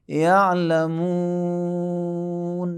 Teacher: وقف کی صورت میں یعلمون بھی زیادہ بھی کھینچ سکتے ہیں، 2 سے 6 تک کھینچنا اختیاری ہے، جائز ہے۔ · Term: مد عارض